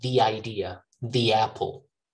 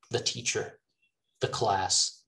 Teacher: but before vowels we say thee